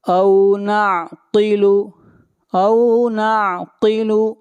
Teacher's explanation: قاف حروف مستعلیہ میں سے ہے، قاف کو موٹا پڑھیں گے